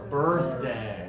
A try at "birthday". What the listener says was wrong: So looking good, but open more.